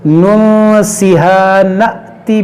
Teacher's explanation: یہ حمزہ ہے, حمزہ ساکنہ ہے, اس کو ہم پڑھیں گے نأتی جھٹکا دے کر, ننسها نأتی بخیر منها او مثلها.